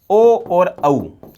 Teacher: ओ और औ का उच्चारण करते थोड़ा सा कम गोल बनते हैं। थोड़ा सा टेढ़ा-मेढ़ा बनना शुरू हो जाता है। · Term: अर्धवृत्ताकार स्वर